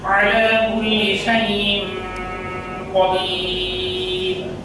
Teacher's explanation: এই উদাহরণের মধ্যে হামজা মেসে দুই জের আছে তানবিন, যেহেতু তানবিনের পরে অক্ষর কফ, এটি উপরে বর্ণিত এই আটটি অক্ষরের মধ্যে নেই, সেহেতু এখানে এই তানবিনকে পুরা করতে হবে, অর্থাৎ এই তানবিন বিশিষ্ট অক্ষরটাকে নাকের মধ্যে কিছুক্ষণ ধরে রাখতে হবে